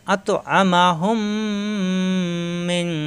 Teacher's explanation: নুন সাকিনের পরে আসছে জিম ইকফা গুন্না, মিং অনেশ্বরের মতো গুন্না হবে।